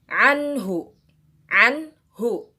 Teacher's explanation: Nun sukunnya benar-benar terjelas, benar-benar terdengar dengan jelas karena nun sukun ini bertemu dengan huruf H. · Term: idhar halki